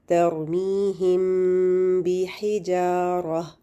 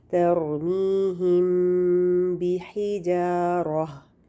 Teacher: अब इसमें हमने क्या किया, ये मीम है साकिन और आगे बा है, तो हम मीम की आवाज़ को छुपा के यानी होंठों को नरमी से मिला के और 2 हरकत गुन्ना करके मीम को पढ़ेंगे। ठीक है, यानी हम मीम पे 2 का हरकत गुन्ना करेंगे, होंठों को नरमी से मिलाएंगे। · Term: इख्फ़ा शफ़ी